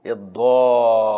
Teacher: شدة الضاد، شدد اللام، المد 6 حركات